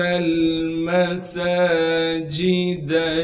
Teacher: سین پر کڑا زبر ہونے کی وجہ سے سین کو ایک الف کے مقدار کھینچیں گے اور سین میں سیٹی ادا کی جائے گی